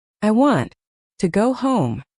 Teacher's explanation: The stress falls on want and home.